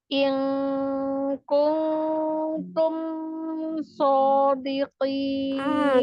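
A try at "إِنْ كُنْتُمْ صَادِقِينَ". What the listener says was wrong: Kelamaan. Jangan juga kelamaan ya. In kuntum shodiqin. Tapi nggak boleh mantul dan nggak.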